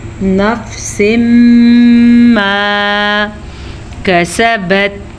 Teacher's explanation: تنوین کے بعد یمون میں سے میم آیا ہوا ہے تو ہم پھر سے ادھر ادغام بالغنہ کریں گے، غنے کے ساتھ آپس میں ملائیں گے